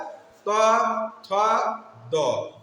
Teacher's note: দাঁতের সাথে লাগছে জিহ্বাটা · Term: দন্ত বর্ণ